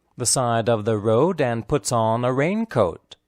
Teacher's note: side and road are the emphasized words